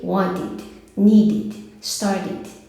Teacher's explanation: Terminou em D, terminou em T, coloque lá esse sonzinho de ID aí e curto